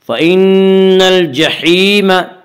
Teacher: الجحیم یا مدہ وہ یا جو ساکن اس سے پہلے زیر ہو، یا مدہ کو ایک الف کے برابر کھینچ کر پڑھیں گے